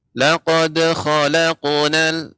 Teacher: tebal ya, isti'la, naiknya suara ke langit-langit dibaca, akan tapi tidak ada hamzahnya. Laqad khalaqnal tidak laqad khalaqna. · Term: qalqalah